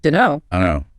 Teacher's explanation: The T in don't often just vanishes. So you're left with dunno. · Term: elision